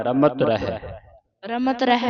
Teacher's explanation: ਠੀਕ ਹੈ ਇਹ ਇਥੇ ਕਈ ਸੰਗਤਾਂ ਨਾ ਰੰਮਤ ਪੜਦੀਆਂ ਰੰਮਤ ਰਮਤ ਅਧਕ ਲਾ ਕੇ ਜਾਂ ਟਿੱਪੀ ਲਾ ਕੇ ਪੜ੍ਨਾ ਨਹੀਂ ਇਹ ਪੋਲਾ ਪੜ੍ਨਾ